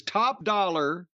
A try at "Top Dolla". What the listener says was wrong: Dollar. not dollar. Dollar. But it's spelled Dolla. It's not top dollar.